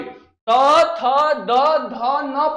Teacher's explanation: त थ द ध न पढ़ रहे तो हमारा जो जीभ है दांत में टच कर रहा है इसलिए उसको हम लोग क्या बोल बोल देंगे दंत बोल देंगे